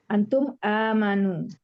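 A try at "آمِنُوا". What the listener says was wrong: Aminu. Memnya itu kasrah. Mim itu nggak boleh berubah-ubah rekannya, Bu, tetap kasrah. Aminu.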